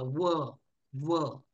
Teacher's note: म्हणून बघा व, व आपला जो ओठ आहे ते दातांना स्पर्श करतात, जीभ सुद्धा, तेव्हा वचं उच्चारण होतं. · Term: दंतोष्ठ